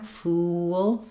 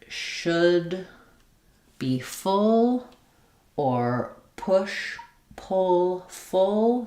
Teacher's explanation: The main difference here is we have the tense oo sound for fool and the lax sound for full